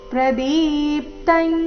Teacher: ಪ್ರದೀಪ್ತಂ ದೀರ್ಘ ಬಂದು ನಂತರ ಆಘಾತ